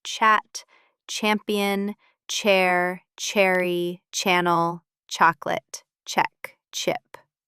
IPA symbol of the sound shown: tʃ